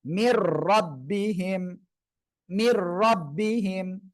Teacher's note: নুন সাকিনের পরে ইদগামে বেলাগুন্নার অক্ষর র আসছে এজন্য গুন্না ছাড়া মিলিয়ে পড়বেন